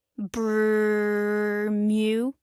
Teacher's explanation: It is a short, rolling sound made in the back of the throat, ending in a soft, upward meow. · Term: human trill